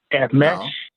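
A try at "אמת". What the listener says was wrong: No, not a sh sound, an S sound.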